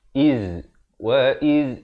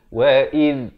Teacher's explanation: Kalau yang ini wa iz hujung lidah keluar di antara dua gigi. Itu perbezaan tempat keluar ataupun makhraj bagi huruf zal dan huruf zai.